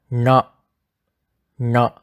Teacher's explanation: sure that your tongue is touching the roof of your mouth your tongue has to be in contact with the hot palate as shown in the diagram so it sounds a little bit pressurized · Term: retroflex